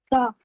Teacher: जुबान की नोक हिल पे लगेगी।